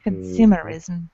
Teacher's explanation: Stress on the second syllable of this word.